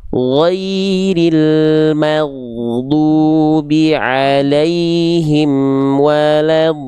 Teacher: Sip, tinggal panjangkan sedikit di bagian do, ada mad lazim. Jadi do di sini kadar panjangnya 6 harokat.